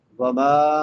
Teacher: میم کے بعد الف مدہ ہے، ایک الف کے برابر لمبا کریں گے، الف سے پہلے زبر آ جائے تو الف مدہ کہلاتا ہے۔